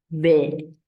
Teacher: This is creaky, which is what we know as vocal fry.